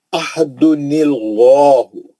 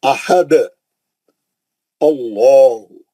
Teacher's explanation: मिलाएंगे भी तो अल्लाह का नाम मोटा रहेगा, रोकेंगे भी तो अल्लाह का नाम मोटा रहेगा